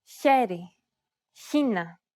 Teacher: this is the same letter as before, but in combination with an I or an E vowel, it sounds a little bit like the H in the word hue, but with turbulence. This sound is pronounced in the front part of the mouth.